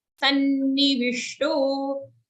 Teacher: Sanni, double na, don't say sunny